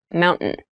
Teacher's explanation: keep in mind when you pronounce this word in fast speech it sounds like Mountain the T sound is reduced